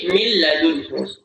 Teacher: Nunnya, ya, nunnya tidak dibaca, langsung masuk huruf lam, tapi tidak ditahan. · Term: al-idgham bila gunnah